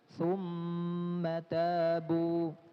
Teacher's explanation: Mim bertasydid maka dia gunnahnya harus sempurna. Ya, kalau di hidungnya tutup maka gunnahnya hilang.